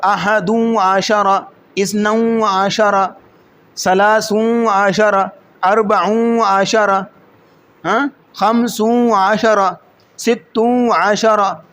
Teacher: یعنی یہاں پہ پڑھنا مشکل تھا واؤ کے ساتھ، یعنی غنہ کر کے. اگر تجوید کے طالب علم سن رہے ہیں تو وہ جانتے ہوں کہ یہاں غنہ کرنا پڑے گا، ادغام بالغنہ کرنا پڑے گا